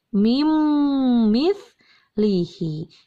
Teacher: Contoh yang ketiga ada pada kata min, ditulisnya min mithlihi, tapi dibacanya menjadi mim mithlihi. Hilangkan n-nya, dilebur. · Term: idgham